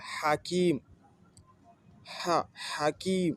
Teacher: c'est un son guttural, sec, un peu comme celui que l'on fait lorsqu'on tousse ou lorsqu'on brûle en mangeant un plat un peu trop épicé